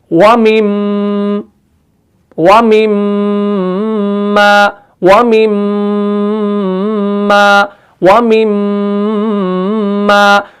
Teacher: पूरी आवाज जो आपकी निकल रही है गुन्ना के वक्त वो नाक के बांसे से ही निकलती है। तो आपने यहां से आवाज को निकालना है और लेकिन मखरज को सही तरीके से अदा करना है।